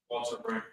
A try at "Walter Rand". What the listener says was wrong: With a D. R A N